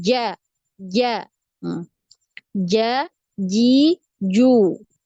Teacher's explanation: Nah, jim ini diingat lagi ya untuk huruf jim, jangan sampai ada udara yang mengalir ya. Tidak boleh ada udara mengalir. Jadi tidak ada suara desis ya.